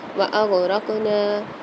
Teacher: را کے ساتھ قاف آ رہی ہے، یعنی یہاں پر قلقلہ کر کے پڑھیں گے،